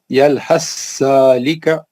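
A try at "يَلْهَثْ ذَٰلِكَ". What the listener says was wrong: ہاں ایک بار اور پڑھ لیجیے، سا نہیں نکلے گا۔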